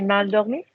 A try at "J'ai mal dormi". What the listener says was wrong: Nice accent. Go again.